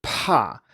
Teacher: we just add a lot of aspiration and say PA and then over time I can gradually reduce